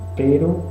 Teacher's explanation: la E de pero es más cerrada, un poco más cerrada